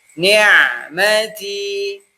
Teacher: Ainnya alirkan tapi lebih pendek daripada ha.